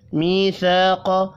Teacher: میثاق، یا مدہ اور الف مدہ یہاں بھی ایک ایک الف کے برابر کھینچ کر پڑھے جائیں گے۔ قاف حروف مستعلیہ ہے، پر پڑھیں گے